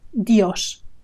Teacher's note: it's Dios with a very short I and the stress on the letter O